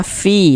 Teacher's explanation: Sebelum ya sukun ada harokat kasroh, maka huruf yang memiliki harokat kasroh dibaca panjang. Sehingganya fi dibaca panjang. Mad tabi'i panjangnya 2 harokat